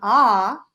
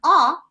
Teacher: And, you know, we can argue with that in terms of length, but technically 'ah' is longer and A is shorter. But 50 years ago, they really had a difference Even 30 years, depending on what age person you're talking to, they still have a slight difference in that.